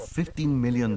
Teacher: Okay, we want to stress that N. So he didn't really stress the beginning of the second syllable, T, but he did stress that N